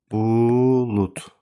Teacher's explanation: D samiti T-ya çevrildiyi üçün bu sözdə kəmiyyət fərqi mövcud deyil, amma keyfiyyət fərqi vardır.